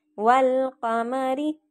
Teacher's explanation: تو اس میں الف نہیں پڑھیں گے، لام کو پڑھیں گے، ٹھیک ہے۔ والقمری، تو اس میں ہم نے لام کو پڑھا، الف کو نہیں پڑھا۔ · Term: حروف قمری